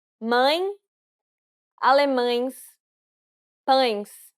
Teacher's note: Since it's a nasalized diphthong, you need to pronounce it through the nose. And the E is closed.